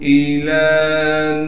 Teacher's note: لام پر کڑا زبر ہونے کی وجہ سے لام کو ایک الف کے مقدار کھینچیں گے